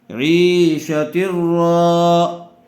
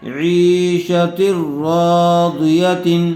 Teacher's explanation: تنوین کے بعد حروف یرملون میں سے را آئی ہوئی ہے اس لیے بغیر غننے کے ملا کر پڑھا جائے گا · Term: ادغام بلا غنہ